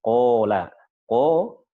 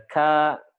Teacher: Alif kalau dia bersanding dengan huruf tebal, dia jadi tebal, huruf isti'la. Qaf dengan alif, qola. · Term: alifnya jadi tebal